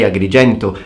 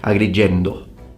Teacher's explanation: they tend to pronounce the T like a D, particularly when it's at the end of words. · they don't say Agrigento, they say Agrigendo with a D